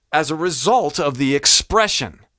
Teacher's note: result went up a little bit expression went down a little bit expression was more a little bit more guttural as a result